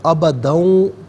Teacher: اچھا، سب سے پہلے یہاں پر آپ دیکھیں کہ واو آ رہا ہے، تو پچھلے آیت کریمہ کا جو آخری کلمہ تھا ابدن، اب اسے اس کے ساتھ ملا کر پڑھیں گے تو ابدن میں دال پر دو زبر کی تنوین ہے، اسے واو کے ساتھ ملا کر واو کی آواز کو ادا کیا جائے گا